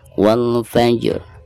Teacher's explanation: Jadi pertama kita baca dulu huruf jimnya sekaligus qalqalahnya ya. Setelah qalqalah jim tersebut diikuti dengan huruf ro sukun.